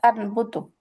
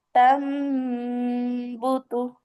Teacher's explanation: নুন সাকিনের জায়গায় মিম বসে যাবে, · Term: ইকলাবের হরফ